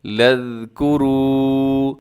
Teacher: لام کو آگے ذال کے ساتھ ملائیے گا۔